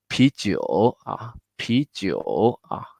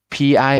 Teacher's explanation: It's so pi with a lot of air. 啤. With a lot of air pump out.